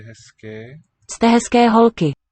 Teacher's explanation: I think the Z is devoicing in contact with the K.